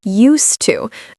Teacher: even though there's an ed, we're not pronouncing it like used. We're pronouncing it as one syllable as use.